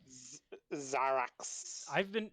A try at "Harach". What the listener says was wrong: It's not, there's no X. And also, ech and ach are two different sounds with two different letters.